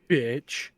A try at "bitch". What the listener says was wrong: No, it's a subtle bitch. It's not a hard bitch. It's a subtle bitch. It's quick too.